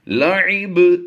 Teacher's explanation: لہو ولعب، 2 پیش کی تنوین کو وقف میں ہم نے ساکن کر دینا ہے۔ جب ہم ساکن کریں گے تو با حروف کلکلہ میں ہے تو یہاں پر ہم نے کلکلہ کرنا ہے